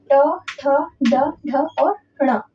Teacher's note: जब जीभ की उल्टी हुई नोक है ना उसका निचला भाग जो होता है वो मूर्धा को स्पर्श करता है। है ना? उल्टी हुई नोक का मतलब है कि आपकी जो ये जीभ होती है ना इसे फोल्ड हो जाती है। · उल्टी हुई नोक का मतलब है कि आपकी जो ये जीभ होती है ना, जैसे फोल्ड हो जाती है ना, फोल्ड हो जाती है और वो मूर्धा को स्पर्श करता है ना। मूर्धा क्या होती है, तो मूर्धा आपके जो ऊपर के दांत होते हैं ना, ऊपर के दांत और आपकी तालू, है ना, तालू और ऊपर के दांत के बीच में जो कठोर हिस्सा होता है उसको मूर्धा कहते हैं हम लोग, ठीक है। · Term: मूर्धन्य व्यंजन